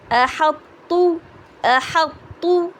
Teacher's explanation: تو کو پہلے ہم ہیوی کریں گے اور آگے پھر ہم اس کو تا کو لائٹ کر دیں گے